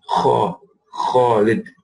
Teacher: Kha is often mispronounced as a ka.